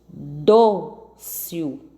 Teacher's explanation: 2 sílabas. A sílaba forte é o dó.